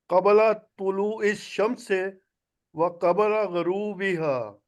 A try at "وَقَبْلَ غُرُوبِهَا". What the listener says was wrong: نہیں غین کے اوپر زبر پڑ رہے ہیں نا، پیش پڑے.